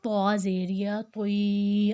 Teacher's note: تا میں اور طا میں واضح فرق ہوگا، اس کو ہم نے موٹا رکھنا ہے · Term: موٹے والا